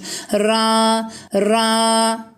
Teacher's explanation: harekesi üstün olduğu için de kalın okunur